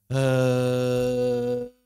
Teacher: Ada getaran itu pita suara.